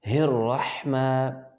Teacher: اور جو ہا رہی ہے اس کو گلے کے اندر سے ادا کریں گے